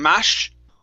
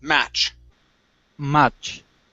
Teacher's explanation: with the ch sound we push hard okay and then we stop the sound in the air